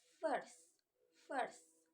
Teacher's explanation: When I say F, first, first, there's only air.